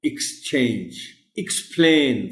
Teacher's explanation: in most of the word beginning with EX the sound is of ick not ek